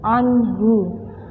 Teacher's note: nun sukun bertemu dengan lafat ha, itu adalah izhar, maka wajib dibaca jelas